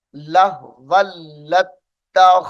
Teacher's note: वाव को लाम मुशद्दद के साथ मिलाएंगे और लाम को ता मुशद्दद के साथ मिलाकर पढ़ा जाएगा।